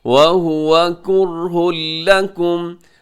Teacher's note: کرہ لکم میں ہاں کے اوپر تنوین کے بعد آگے لام ہے، ادغام یہاں پر ہوگا لیکن بغیر غننے کے ادغام ہوگا